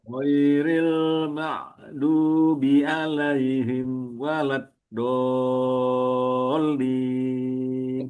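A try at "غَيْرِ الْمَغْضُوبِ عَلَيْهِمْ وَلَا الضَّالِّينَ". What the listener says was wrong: Ingat bahwa ini adalah bukan ain ya. al maghdu ghain bukan bukan ain.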